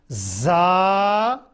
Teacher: जबान का अगला हिस्सा ऊपर के तालु के साथ सख्ती से लगाना है।